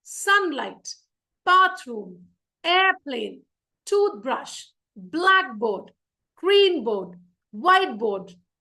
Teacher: अगर noun हुए दोनों, तो the stress will be on always the first syllable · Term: compound words